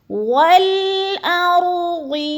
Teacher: را سے پہلے لفظ حمزہ کے اوپر زبر آ گیا تو ادھر را کو ہم نے پر کر دینا ہے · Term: پر رایا